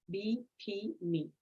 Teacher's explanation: in words such as B P me the first and the last are voiced